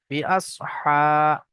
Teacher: খারা জাবার আলিফ মাদ্দার মতো একালি পরিমাণ টান দিয়ে পড়তে হবে।